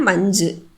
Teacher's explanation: கடைசியில் வந்திருக்கக்கூடிய சு அப்படிங்கிறது முழுமையா ஒலிக்காதனால இது குற்றியல் உகரம். இதுக்கு முன்னாடி வந்திருக்கக்கூடிய மெய் இஞ் அப்படிங்கறது மெல்லினம் அதனால இதுவும் என்ன குற்றியல் உகரம் மென்தொடர் குற்றியல் உகரம்.